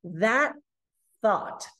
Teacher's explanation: I stop the air in my throat.